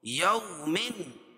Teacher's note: تنوین کے بعد حروف حلقی کے 6 حرفوں میں سے حمزہ ہے، اس لیے یہاں اظہار ہوگا، اظہار حلقی ہوگا، اس کو ظاہر کر کے پڑھیں گے